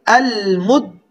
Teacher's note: ال، میم کے اوپر پیش مو، اور دال کے اوپر شد اور زبر، میم کو دال کے ساتھ سختی سے ملائیں گے